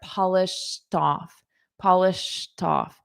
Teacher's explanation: because I have a vowel after it off, I'm going to connect those together.